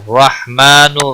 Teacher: را زبر کی وجہ سے پر پڑھا جائے گا